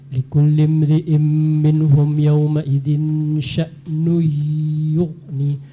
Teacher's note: tanwin jumpa dengan ya, idgham ma'al ghunnah